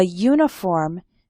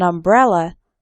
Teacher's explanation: uniform starts with a y sound, but an umbrella because umbrella starts with an a sound, a vowel sound.